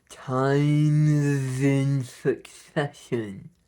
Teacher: We want to just glue the words together, times in succession, and keep phonating as well.